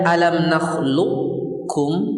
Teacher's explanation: dibaca dengan idgham kamil. Artinya semua sifat qaf diidghamkan ke kaf tanpa tersisa.